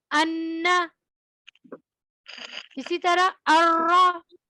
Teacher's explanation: जबान के अगले हिस्से को ऊपर के सामने वाले 6 दांतों के मसूड़ों से लगाते हुए अदा होता है